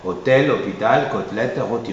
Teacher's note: c'est vrai qu'il y a l'accent circonflexe, mais la prononciation est ouverte.